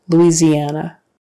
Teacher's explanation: that s in the middle is a z